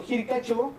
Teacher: En el locativo, por ejemplo, utilizamos nosotros el quechua de Ancash, el sufijo chao, que se pronuncia como cho, por la monoptongación